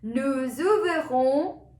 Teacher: We have the linking over here because nous is starting with S and ouvrons is starting with O. So we'll have a Z sound.